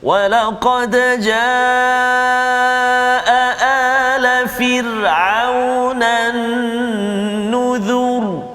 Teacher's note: Tebal bunyi ra tu sebab huruf zal tu baris depan.